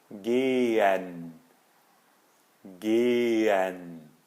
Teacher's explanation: E o H no meio da palavra a gente não pronuncia